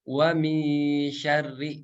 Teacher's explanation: huruf shin ini termasuk ke dalam huruf tipis. Jadi ikhfanya juga atau menyamarkannya juga tipis. Wa min syarri, bukan wa mil syarri.